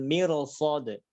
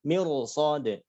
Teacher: karena mir yang harusnya kasrah tapi depannya ada huruf sad, nah itu akan dibaca tebal ya